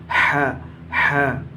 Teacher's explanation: ہا کا مخرج ہے حلق کا درمیانی حصہ · ह का मखरज है हलक का दरमियानी हिस्सा